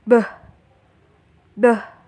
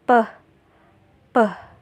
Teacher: kedua bibir artikulator bertemu untuk membentuk bunyi bilabial